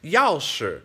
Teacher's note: But 钥匙, right? The yao is exaggerated. It's a quick drop. It's a bit angry. It's a fourth tone, right? But the shi, that's that fifth tone.